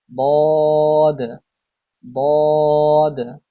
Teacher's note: জিহ্বার গোড়ার কিনারা উপরের মাড়ির দাঁতের গোড়ার সঙ্গে লাগিয়ে উচ্চারিত হয় দদ